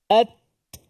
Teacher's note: Kita lepaskan lidah daripada makhraj ta, dia keluar angin. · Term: hamas